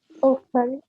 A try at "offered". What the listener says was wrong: Offered ما فيهاش مش offer it. Offered. ما فيش صوت إضافي.